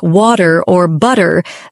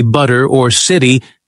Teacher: Another biggie is the flap T sound. In words like water or butter, the T turns into a soft D. So instead of a crisp water, Americans say water, almost blending it into one smooth sound.